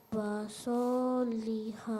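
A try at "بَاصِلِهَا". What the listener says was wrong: Nah, so di sini pendek, nak. Karena dia bergabung dengan huruf lam. Basoliha. Basoliha. Hanya saja mungkin Ananda udah terbiasa panjangnya jadi kelebihan 2 harokat.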